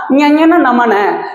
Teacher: மூக்கு இடமாக கொண்டு பிறக்கக்கூடிய எழுத்துக்கள் இந்த மெல்லினம்